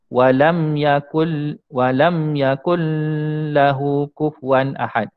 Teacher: kita memasukkan Nun bunyi Nun atau tanwin tadi itu ke dalam huruf-huruf ke dalam huruf lam